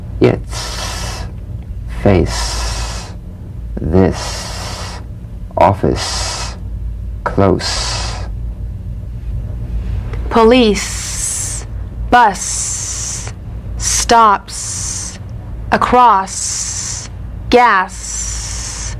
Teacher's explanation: to the Z unvoiced s sound fricative tongue to gum Ridge the S is like the Z except it's unvoiced so it's the same tongue placement as the Z the Z the S is like a gentle escape of steam · sounds like the kettle's boiling the s cognate to the Z unvoiced s sound fricative tongue to gum Ridge